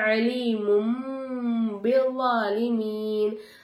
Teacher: மீமே சாக்கின் மீமுக்கு மேல உள்ள தன்வீனுடைய குறியீட மீமா மாத்தி உச்சரிக்கணும். அலீமுன் அப்படின்னு சொல்லாம அலீமும் பிஸ்ஸாலிமீன். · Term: இக்லாபுடைய